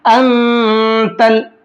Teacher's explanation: इस नून के अंदर इख्फा करेंगे, क्योंकि नून साकिन के बाद में ता है, और ता इख्फा के 15 हरफों में से एक हर्फ है, तो इस सूरत में नून को थोड़ी देर नाक में छुपाएंगे